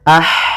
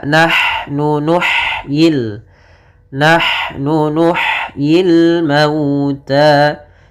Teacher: Pada lafal nahnu di sini ha-nya sifat hamasnya jelas.